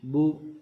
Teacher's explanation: بو دونوں ہونٹوں کو گول کر لینا ہے، پھر پڑھنا ہے با پیش بو۔